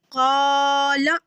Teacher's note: قالا الف جو ہے خالی حصے سے ادا ہو رہا ہے منہ کے